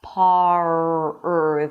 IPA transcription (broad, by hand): pɑːr